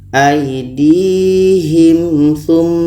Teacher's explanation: Seterusnya tha dalam surah An-Nisa ayat 62 ini. Ada mim mati bertemu tha, maka ini izhar syafawi. Dua-duanya harus dibaca jelas dan tidak dengung.